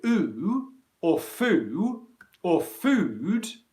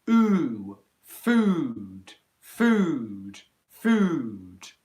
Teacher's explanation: the length of the long vowel sound is the same